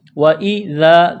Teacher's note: وَإِذَا، واو کو جلدی پڑھنا ہے بغیر کھینچ کے، واو کے اوپر زبر ہے، واو کو پڑھتے وقت ہونٹوں کو گول کرنا ہے۔ وَإِذَا، ذال کو ایک الف کے برابر کھینچنا ہے